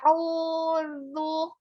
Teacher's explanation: ketika huruf dzal lidahnya harus keluar ya